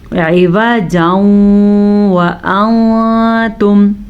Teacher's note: تنوین کے بعد یمون میں سے واو ہے تو دونوں کو آپس میں ملا کے بغیر غننے کے پڑھنا ہے